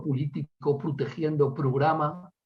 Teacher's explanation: el cierre de la O átona